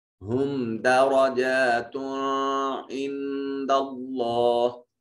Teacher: میم ساکن کے بعد دال ہے، جو میم ساکن کے بعد نہ با ہے نہ میم ہے، دال ہے بلکہ، لہٰذا میم کو ظاہر کر کے پڑھیں گے